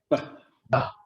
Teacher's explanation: The lips come all the way together, and you pronounce it as the hard B.